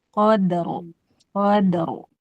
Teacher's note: Dalnya tipis mantul jadi ditarik tapi rnya tebal.